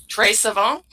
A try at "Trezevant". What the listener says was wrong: No, Trezvant. Like, it's Trezvnt. There's no vowel there. Trezvant.